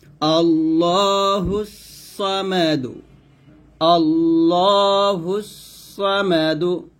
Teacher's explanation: আল্লাহ শব্দের মধ্যে লামের ডানে জবর কিংবা পেশ হলে উক্ত লামকে পুর করে পড়তে হয় মানে এই লামটাকে মোটা করে পড়তে হবে